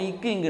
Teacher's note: நாவின் முதல் பகுதி அன்னத்தின் அடிப்பகுதி